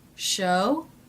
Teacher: rising intonation for that yes/no question